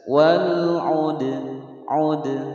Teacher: dal berharokat sukun di tengah-tengah kalimat dipantulkan qalqalah sughra